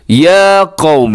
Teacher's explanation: या के ऊपर खड़ा ज़बर है तो इसको आपने लंबा करना है।